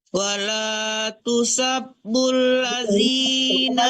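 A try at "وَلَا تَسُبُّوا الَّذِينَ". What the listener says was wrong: Terbalik, jangan tusab tapi tasub.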